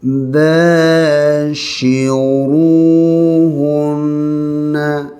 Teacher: Shin kena jaga ni ya, jangan tertukar dengan sin. Keluarkan angin banyak, sifatnya tafashi.